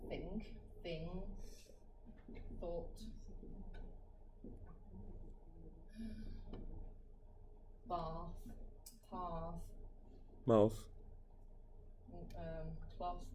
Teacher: Première prononciation, c'est la prononciation sourde, le θ.